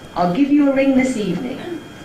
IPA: I’ll ˈgive you a ˚ring this ˎevening